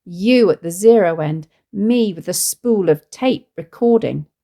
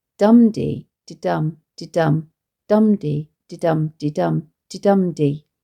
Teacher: there are two instances where Armitage has substituted a trochee when an iamb would have maintained the rhythm. This results in the words you and me both falling on a stressed syllable, which puts emphasis on these words.